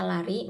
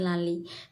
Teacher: pelafalan yang mereka ucapkan pada saat membaca konsonan R menjadi L.